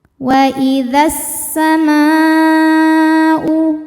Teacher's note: Maka alif lamnya dilewatin gak dibaca, dinamakan dengan idgham syamsi. Wa idzas sama'u, ma, hukum tajwidnya adalah mad wajib muttasil karena mad tabi'i ketemu hamzah dalam satu kata.